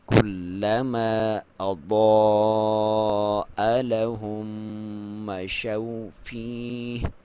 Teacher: ضاد کے اوپر مد واجب ہے، اس کی لمبائی 2 سے 5 الف تک آپ کر سکتے ہیں. اور اضاء، اضاء نہیں کرنا کیونکہ الف جو ہے وہ اس اپنے سے پہلے حرف پہ جو اس کی جو ساؤنڈ ہوگی اس کے تابع ہوگی.